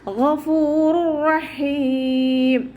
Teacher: തൊണ്ടയുടെ ആദ്യ ഭാഗം, നമ്മുടെ നാവ് കഴിഞ്ഞിട്ട് തുടങ്ങുന്ന അതേ ആദ്യ ഭാഗത്തു നിന്നാണ് ഗൈന് പുറപ്പെടുന്നത്. സൗണ്ടിന് ഗ എന്നുള്ള സൗണ്ട് തന്നെ കൊടുക്കുക കേട്ടോ. · ഗൈന് ഇസ്തിഅലാൻ്റെ ലെറ്ററാണ്. നാവിൻ്റെ ബാക്ക് മുകളിലേക്ക് ഉയർത്തി കൊടുക്കുക കേട്ടോ. മഖ്റജ് വരുന്നത് അദ്നൽ ഹൽക്കാണ്.